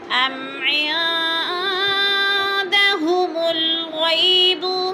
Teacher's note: عین پہ جو ہے ہم نے غنہ کرنا ہے، ناک میں آواز لے جانی ہے